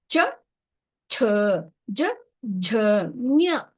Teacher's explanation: ಚ, ಛ, ಜ, ಝ, ಞ. ನೋಡಿ, ಎಲ್ಲವೂ ಕೂಡ ತಾಲವ್ಯ. ನಾಲಿಗೆ ಹೋಗಿ ಅಂಗಳಕ್ಕೆ ತಾಕ್ಕೊಳ್ಳುತ್ತೆ. ಆ ನಾಲಿಗೆ ಎಷ್ಟು ಮಟ್ಟಿಗೆ ತಾಕ್ಕೊಳ್ಳುತ್ತೆ, ಪೂರ್ಣ ಒಂದು ನಾಲಿಗೆಯನ್ನು ಕೂಡ ಹೋಗಿ ತಾಗತ್ತೆ.